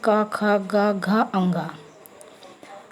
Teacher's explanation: का वर्ग कंठ से बोलते हैं